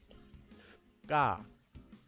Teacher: these are spoken by slightly tensing your mouth before you say them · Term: double consonants